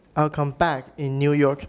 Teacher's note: some people think the first one is not stressed but they are both stressed but back sounds more prominent because it carries the tonic stress